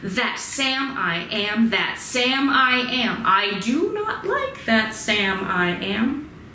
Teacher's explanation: weak strong weak strong weak strong weak strong